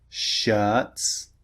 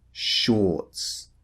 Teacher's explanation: Remember the first one, the mouth is relaxed. The second one, or, the mouth is rounded.